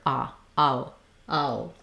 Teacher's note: They make a break between after each vowel sound, so you want to have ah and o with a little break. Ow, ow. Be short on both.